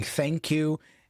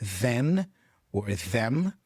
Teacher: the th sounds, you know, voiceless and voiced as in thank you and the as in then or them